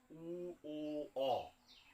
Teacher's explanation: উ, ও আর অ, এই তিনটে উচ্চারণকালে কিন্তু ওষ্ঠের আকৃতিটা গোলাকার হচ্ছে, কুঞ্চিত হচ্ছে। উ, ও, অ, এখানে একটা গোল ভাব আসছে, গোলাকার হচ্ছে ওষ্ঠগুলো। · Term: কুঞ্চিত স্বরবর্ণ